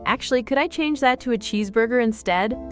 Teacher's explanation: The flow was perfect. Your intonation went up slightly on cheeseburger and then down at the end, which is exactly right for a polite question.